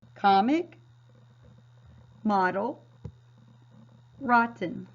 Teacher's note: So if you look at these words like comic, your syllable break is after your M. So since your syllable break is not right there with your O, it's going to make that short O sound ah.